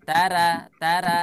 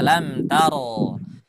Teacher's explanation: kalau ada ro berharokat fathah atau ro berharokat dhamma, dia selalu dibaca tebal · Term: ro harus tebal